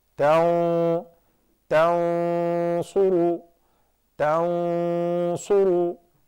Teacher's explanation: Why? Because the fat ghunna, because it is followed by a fat letter, which is the sad